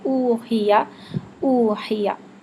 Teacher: उ के लिए मुकम्मल होठ गोल होंगे और चोंच की तरह होठ मुकम्मल आगे बाहर आएंगे